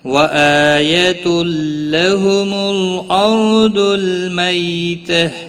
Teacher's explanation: حمزہ کے اوپر کھڑی زبر ہے، ایک الف کے برابر کھینچ کر پڑھیں گے